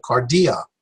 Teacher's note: We'll put the stress on the middle syllable